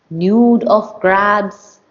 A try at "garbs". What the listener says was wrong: No, no, no. You keep saying grabs. It's garbs.